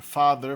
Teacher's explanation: às vezes o A é pronunciado mais ou menos como o nosso A, tende a ser um pouco mais aberto, depende da variedade.